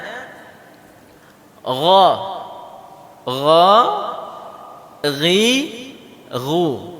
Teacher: Nah, sama dengan huruf kha. Nah, di tenggorokan tapi bahagian atas, lebih dekat ke mulut. Ya, jadi bacanya gha, ghi, ghu. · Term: huruf ghain